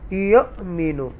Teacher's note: حمزہ ساکنہ جب ہوتا ہے تو اس کو ٹوچ کرتے ہیں, جرک سے پڑھتے ہیں, جھٹکے سے.